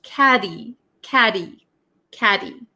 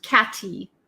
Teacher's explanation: sometimes is referred to as a flap T so it doesn't sound like a hard sound